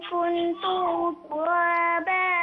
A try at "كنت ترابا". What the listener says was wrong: كنت ترابا no stretch on ta.